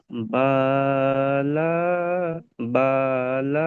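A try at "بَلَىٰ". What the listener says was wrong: বাটা টান হবে না, বালা এমনি করে হবে বালা।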